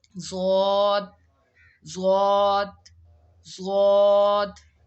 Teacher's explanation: ضاد کو بھی پڑھتے وقت حلق سے آواز نکالیں گے تو ضاد ادا ہوگا